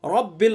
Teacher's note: रा को पुर, अल्लाह के लाम को बारीक, आलमीन, आइन को हलक से अदा करेंगे